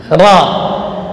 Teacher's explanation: Ra'sul lisan. Yang bergetar adalah bagian atasnya lidah. Ya, ra. Getarannya maksimal 2 getaran. · Ra, bukan ro. Tidak boleh cenderung ke o, tapi dia fathah namun tebal. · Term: huruf takrir